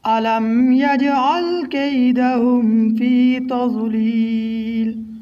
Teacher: علم میم میں اظہار ہوگا۔ یجعل میں یہاں قلقلہ کریں گے۔ کیدہم میں اظہار ہوگا۔